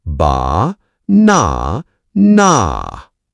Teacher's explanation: Feel the strong beat in the middle. The word banana has a soft ba, a strong na, and a soft na. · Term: Stress in words